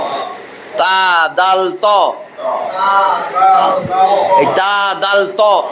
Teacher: এইটা দাল, এইটা ত, তা দাল ত, তা দাল ত। এটা জিহ্বার আগা যায় লাগবে উপরের দাঁতের গোড়ায়, তাহলে বুঝবেন হয়েছে।